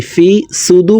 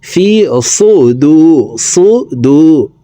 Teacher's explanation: সদকে মোটা করে উচ্চারণ করব সিনার উচ্চারণ করা যাবে না